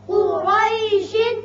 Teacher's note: قاف پر ہوگا، حروف مستعلیہ میں سے ہے. را کے اوپر زبر ہے، یہ بھی پر پڑا جائے گا.